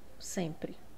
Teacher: Então, esse M ele está nasalizando esse e. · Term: dígrafo vocálico